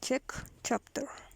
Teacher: Voiceless fortis palato-alveolar affricate.